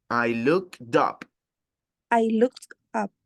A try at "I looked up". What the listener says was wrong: I looked up. Pero no es up, es dup. La D de look, la D que está al final de looked, va al principio de up. I looked up. All right, so it's not, I mean, when you pronounce these words, when you speak in English, this is a combination that English speakers do.